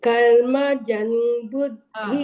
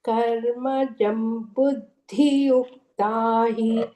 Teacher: அங்க கர்ம ஜன்னு கேக்குறது, கர்ம ஜம் மகாரகா சொல்லணும்